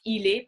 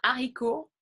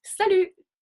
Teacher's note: Et puis, le T, la lettre T, nous ne la prononçons pas souvent, donc voici où nous ne la prononçons pas. So we don't usually pronounce the letter T